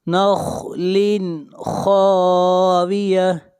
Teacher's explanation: خا کو موٹا پڑھیں گے، خا حروف مستعلیہ میں سے ہے